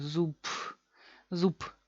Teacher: Así, como si fuese, estamos tan cansados que al final de la palabra ya no se puede pronunciar bien. Al final se queda, en vez de b, se queda p. Así, sin sonido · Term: reducción